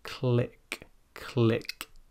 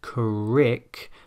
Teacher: It should not sound like crick, but click. You can hear that flicking of the tongue on the top of the mouth there. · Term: L sound